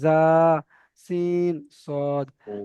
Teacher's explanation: জিভের আগা এবং সামনের উপরের এবং নিচে দুই দাঁতের গোড়ার সঙ্গে লাগিয়ে উচ্চারিত হয় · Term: 13 নম্বর মাখরাজ, মাখরাজ